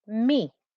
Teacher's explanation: If it was just one kasra on this meme here, if it was just one kasra, I would get the noise mi. So there's no n noise there, is there?